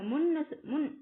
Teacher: நாவின் நுனி மேல்வாய் அண்ணத்தின் முன்பகுதியை தொடுது.